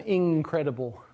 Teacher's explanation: where you get a velar nasal version of in. It's not incredible, at least, unless you're speaking very carefully.